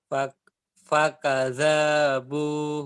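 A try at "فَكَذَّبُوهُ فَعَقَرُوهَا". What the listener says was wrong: salah mas, salah bacanya, ada tasdid mas di situ. Ada tasdid. Fakadzabu gitu mas, disentak aja mas. Fakadzabuhu fa'aqaruha.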